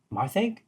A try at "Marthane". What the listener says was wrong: Marthane it's a hard N at the end.